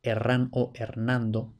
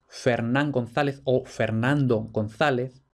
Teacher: este nombre concretamente vacilaba entre la aspiración y la conservación de F